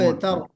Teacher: अबतर कहते हुए बा के ऊपर कलकला, बा पर कलकला हमको करना है